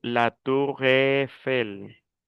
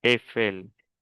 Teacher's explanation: la E con la I es E, una E abierta. Yo digo la Tour Eiffel, es E, Eiffel.